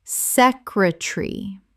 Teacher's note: Three syllables in British English. The middle syllable collapses.